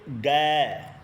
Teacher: ग ये जब आप बोलते हैं इसकी ध्वनि कंठ से आती है तो इसको कंठ वाले वर्ण बोला जाता है नेक्स्ट क्वेश्चन अपना है किस व्यंजन के उच्चारण में जीवा ताल्लु से नहीं टकराती है।